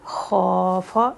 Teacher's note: خوا کی حرکت 2 اور فا کی 1